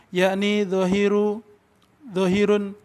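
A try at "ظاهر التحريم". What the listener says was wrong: Kenapa kok ditanwin dhahirun?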